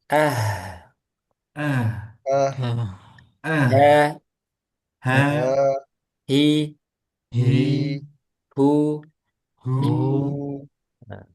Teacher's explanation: Sekarang H ini hams ee udaranya mengalir.